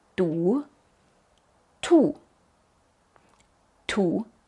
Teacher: como una t en español pero no como en alemán porque en alemán es más fuerte también sale con tanto aire como la p